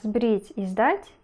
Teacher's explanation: В словах «сбрить» и «сдать» первый согласный приставка «с» находится в слабой позиции. Со звуком, стоящим перед звонким согласным, происходит уже известный вам из прошлых уроков процесс озвончения.